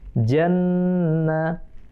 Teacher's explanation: Tasdid di atas nun, itu namanya wajibul gunnah, harus dengung.